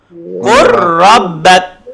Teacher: Bacanya menjadi qur rabbak. Lam hilang masuk ke ra. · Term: idgham mutaqaribain